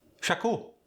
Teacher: often an a sound is introduced in between two consonants for instance school might sound like shaku